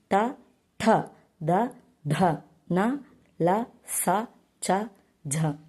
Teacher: దంతాల నుండి పుట్టే అక్షరాలే దంత్యములు